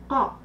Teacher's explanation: Allez, hein, t'es un peu sur la lettre Kaf, là, il faut que ça vienne du fond de la gorge. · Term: lettre Qaf